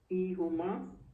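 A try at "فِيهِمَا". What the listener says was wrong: फी हिमा होगा, इसमें भी जेर आ जाएगी। क्योंकि वो जेर है ना।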